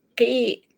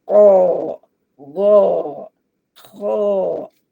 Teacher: bila dia berbaris bawah qaf tu qi tidak berat, tidak tebal. Khi tidak tebal, gi tidak tebal, tetapi baris di atas ko, go, kho tebal dia